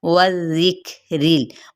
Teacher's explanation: वाव होंठों की ना तमाम गुलाई के साथ और वाव की ज़बर को लाल के साथ नरमी से मिलाते हुए लाल की ज़ेर को काफ पे मिलाएंगे, काफ पे हम्स करेंगे।